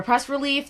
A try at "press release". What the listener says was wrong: You're saying a press relief.